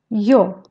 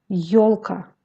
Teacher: Le son yo se compose aussi de deux sons i bref o qui se prononcent presque en même temps